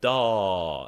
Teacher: This means nothing. But if you add the gangster G on the end, it extends the A vowel